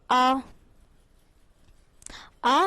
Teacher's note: विव्रत स्वर के उच्चारण में मुख द्वार पूरा खुला होता है।